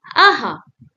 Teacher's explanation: Visarg gives a short breathy sound to the letter and two dots are put after the letter.